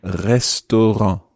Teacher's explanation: it's quite tricky to do and it's this sort of guttural rolled R